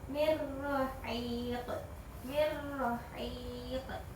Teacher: maka cara membacanya itu dimasukkan hurufnya, huruf lam dan ro, tetapi tidak boleh dengung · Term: idgam bila guna